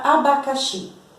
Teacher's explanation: é a última sílaba mais forte a sílaba tônica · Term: oxítona